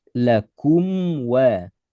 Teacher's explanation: Mim sukun ketemu waw berarti mim sukun ketemu selain mim dan ba. Cara baca jelas setengah mengalir. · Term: izhar syafawi